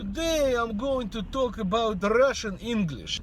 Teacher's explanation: It is characterized by a deep throaty resonance, the use of a dark L sound, and tapped R sounds.